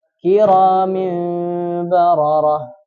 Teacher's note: Ada berpendapat bahwa iqlab itu dibaca dengan antara ikhfa dan idgham. Jadi dia tidak murni mingkem.